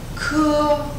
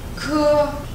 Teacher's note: Khưa chính là âm bật hơi của cưa.